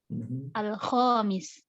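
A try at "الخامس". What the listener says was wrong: Al-khamis. Mumtaz. Mumtazatun jiddan.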